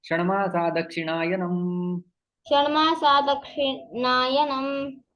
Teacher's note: यहाँ पर विसर्ग का लोप हो जाता है।